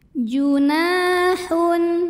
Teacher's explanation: karena ada Alif didahului baris fathah maka Nun panjangkan dua harakat junahun Hun berikutnya ada hukum izhar halqi karena ada tanwin damah